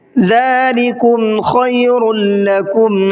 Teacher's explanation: خا کو بھی حلق سے نکال کے پڑھنا ہے